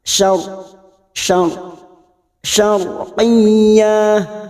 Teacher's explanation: syariyah Syar ra sukun yang didahuli fathah kita baca tafkim tebal ra sukun yang didahuli fathah atau Duma itu dibaca tafkim tafkim itu tebal maka lidah kita terangkat